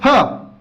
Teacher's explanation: जैसे फ का उच्चारण करेंगे वैसे हमारे दोनों ओष्ठ आपस में स्पर्श हो जाते हैं। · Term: ओष्ठ व्यंजन